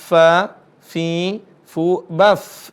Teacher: Perhatikan huruf fa di sini. Ada desisnya sedikit.